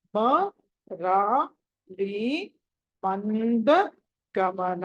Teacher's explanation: తర్వాతది మరాలి మరాలి మంద గమన. మా తర్వాత సున్నా ఉంది అనుస్వారము. ఆ అనుస్వారం తర్వాత తవర్గంలోని అక్షరం పంచమాక్షరం తీసుకోవాలి. కాబట్టి మంద అని పలకాలి.